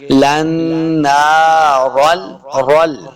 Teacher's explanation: را کو پر پڑھیں گے کیونکہ را کے اوپر زبر ہے۔